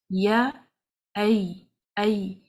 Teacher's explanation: When you say ay, you say it slowly and notice the middle of the tongue is raised. Ya, ay. Do not press hard on your tongue touching the palate, because the sound will not come right for that.